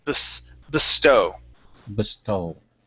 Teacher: So our stru our stress is going to go at the end of the word. Okay. And the uh the e, we're going to sort of treat that like a schwah.